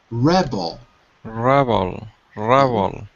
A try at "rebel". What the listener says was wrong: Almost. But I can hear that your mouth is closed. It's more open, especially in the second syllable. Rebel.